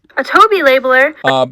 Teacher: It just kind of like consistently goes up in F0. It's a linear sort of rise, I guess you could say, to this peak in TOBI. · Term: low plus high star